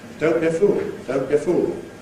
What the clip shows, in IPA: ˌdəʊnt bjə ˈfuːl